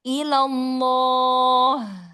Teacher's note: lafzul jalalahnya mau lebih terdengar gendut lagi dan ha di akhirnya mau terdengar rohwahnya lebih alirkan lagi.